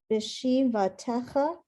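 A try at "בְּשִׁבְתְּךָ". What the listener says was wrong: Slow down. You added a vowel that's not there.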